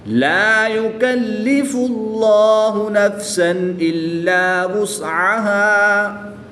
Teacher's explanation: جلالت اللہ عز و جل کے لام سے پہلے حرف پر پیش ہے تو اس لیے اس لام کو پر یعنی موٹا پڑھیں گے. الف مدہ کو وقف میں تبدیل نہیں کریں گے بلکہ 1 الف یعنی 2 حرکات کے برابر ہی پڑھیں گے.